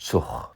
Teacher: how the G at the end of a syllable sounds like h or ch, not k. And the vowel becomes out shortened when that happens.